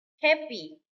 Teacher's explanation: Happy. Stress on the first syllable.